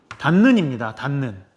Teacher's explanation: 닷의 받침 디귿이 니은을 만났더니 니은으로 바뀌었어